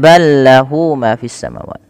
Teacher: ada idgham mutamatsilain, yang dimana ada huruf lam bertemu dengan huruf lam. Maka huruf lam yang pertama dimasukkan. Idgham artinya memasukkan, mutamatsilain itu mirip dari segi makhraj dan sifatnya sama, masuk.